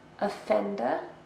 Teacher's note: 3 syllables, and we stress the second.